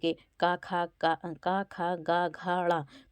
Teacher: तो कंठ ध्वनियाँ जैसे कि का खा गा घा ड़ा, तो ये सब कंठ यानी कि गले से बोली जाती हैं